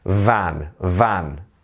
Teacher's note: we're letting a vibration happen between the teeth and the lips